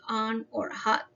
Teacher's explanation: And the short sound like A, like for example on or hot, is produced at the back of the throat and the mouth is wide open and the tongue is lower